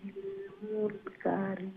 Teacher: মুনকারি নুন সাকিন রে ইখফা করে